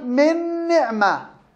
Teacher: أضغمت النون في النون بسبب إيش؟ بسبب التماثل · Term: المتماثلين الصغير